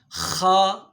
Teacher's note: یہاں حلق کا جو شروعاتی حصہ ہوتا ہے جس کو ادنائے حلق کہتے ہیں، یہاں سے خا ادا ہوتا ہے